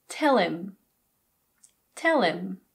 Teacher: This is often reduced to im. Im. Again, we drop the H. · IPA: /ɪm/